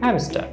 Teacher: এখানে লক্ষ্য করুন hamster আর তার পরের শব্দে হ্যাডে এইচ আছে, তার মানে হচ্ছে আর এর পরে কি আছে এইচ, অর্থাৎ কনসোনেন্ট। সুতরাং আমরা আরটাকে উচ্চারণ করব না, কাজে আমরা কি বলবো হ্যামস্টার।